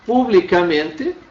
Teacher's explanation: publicamente mantém a sílaba tônica no men, não altera a pronúncia